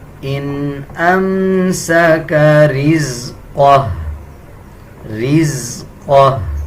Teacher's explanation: ہا کی آواز آدھی نکالی جائے گی